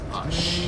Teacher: there's some slight accent on words like us. It was ush, with like an SH sound.